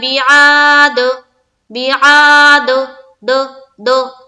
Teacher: अलम तरा कैफ फ़अल रब्बुक बिआद, बिआद, दो दो, ये जो हो रहा है ये हो रहा है आवाज का टकराना, इको साउंड निकालना, इसे ही कहते हैं कलकला करना। ठीक है, कलकला करते हैं तो मखरज टक्कर खाकर अलग अलग यानी कि डबल साउंड आता है